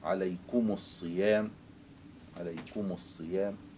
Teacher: إذا وقع بعدها حرف ساكن فهنا يلزمنا التخلص من التقاء الساكنين، والتخلص من التقاء الساكنين في ميم الجمع يكون بضمها